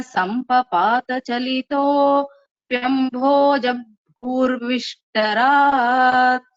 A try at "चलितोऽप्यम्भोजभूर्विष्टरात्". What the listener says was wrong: You should not stop at Chalito and then say Pyambhoja. When you're saying that Chalito Pyambhoja, it should be continuous. Chalito Pyambhoja.